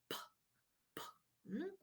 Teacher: All right, the second pair of pictures on the right corresponds to p, p, because in picture one, you can see that there is a complete obstruction between the upper and lower lip, like this. And when the lips open up abruptly, the air escapes with an explosion, but with no vibration